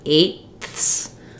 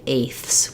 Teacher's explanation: So when I say eighths, I can do a stopped T like eighths, but typically we just say eighths. We drop that stopped T. So you may see it in the dictionary with as though it's a T plus a TH.